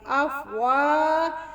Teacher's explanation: وا کو تھوڑا موٹا اور وا کے ساتھ الف ہے اور لمبا بھی.